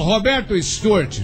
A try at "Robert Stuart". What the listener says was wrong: Não é Roberto.